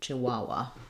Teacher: we stress on the middle syllable